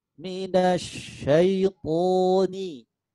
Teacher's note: Kalau shin titiknya 3 itu lidah bagian tengahnya ngangkat menuju ke langit-langit